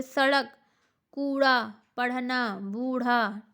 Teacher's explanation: इनका उच्चारण में जीभ पहले ऊपर की ओर उठकर मूर्धा को स्पर्श करती है, फिर तुरंत नीचे आ जाती है। ठीक है, इसलिए इन्हें द्विगुण व्यंजन कहते हैं। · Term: उत्क्षिप्त व्यंजन